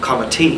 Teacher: the stress in multisyllabic words falls towards the end in Irish.